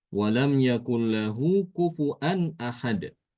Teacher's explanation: Imam Subah membaca dengan mengganti wawu itu dengan hamzah